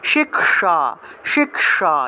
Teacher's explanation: কি উচ্চারণ করব >> শিক্ষা শিক্ষা মূর্ধনস আছে তো মূর্ধনস থাকায় জিভ উলটা স উচ্চারণ করতে হবে